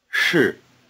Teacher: Said by itself, the word for am, 是, is in the falling tone.